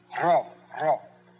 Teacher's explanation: Just like our English R, a little bit of a D in front of it.